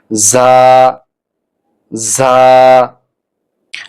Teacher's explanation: জিহ্বার আগা সামনের নিচের দাঁতের গোড়ার সঙ্গে লাগাতে হবে। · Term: ঝা